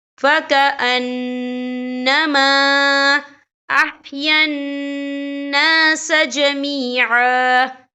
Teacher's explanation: یہاں خالف سے پہلے زبر ہے اور اس پہ چھوٹی سی مد بھی ہے، تو ہم یہاں 3 یا 4 حرکت کے برابر کھینچ کے پڑھیں گے